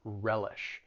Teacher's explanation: When it comes to pronouncing the verb, it has two syllables. The stress is on that first syllable